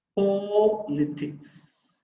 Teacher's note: So the first syllable is the stressed syllable.